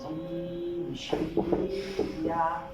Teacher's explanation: জিহ্বার মধ্যখান তার বরাবর উপরে তালুর সঙ্গে লাগিয়ে